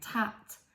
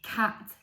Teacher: our tongue should be at the front behind our front teeth for a t and then the back of this tongue should be raised for a k or a g